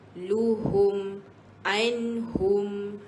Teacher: Untuk baris dhammah dia bukan bunyi lo, bukan bunyi ho, tapi bunyi hu.